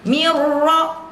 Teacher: nun mati ketemu ro. Jangan sampai kita didengungkan.